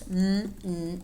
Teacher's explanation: mmm is a voiced bilabial nasal sound